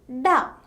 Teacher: In the production of this sound, the air coming from the lungs is stopped by tongue. The tip of the tongue curled back and made contact with the roof of mouth. When contact is released, the air escapes from the mouth with a slight explosion.